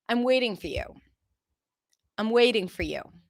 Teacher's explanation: Waiting is the stressed word here.